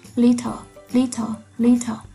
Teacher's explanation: âm L đó là một syllabic consonant. Nó được làm đỉnh của âm tiết.